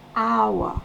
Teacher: On va du A, on va vers le O.